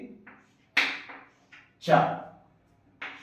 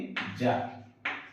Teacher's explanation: అఫ్రికేట్స్ అనేవి కొంచెం స్ట్రక్ అవుతాయి, కానీ కొంచెం ఫ్రిక్షన్ ఉంటుంది అనమాట.